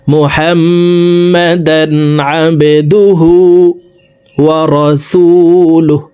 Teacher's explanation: হার উপরে উল্টা পেশ আছে, তাই ঠোঁট গোল করে এই হাকে এক আলিফ টেনে পড়তে হবে